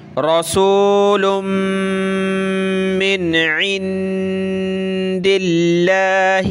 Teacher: نون ساکن پہ ہم نے کیا کرنا ہوتا ہے، اخفا کرنا ہوتا ہے، ناک میں آواز پیدا کرنی ہوتی ہے